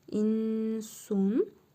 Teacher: İhva qaydasıdır. Nun hərfini burnumuzda tələffüz edirik. Bir əlif miqdarı uzadırıq.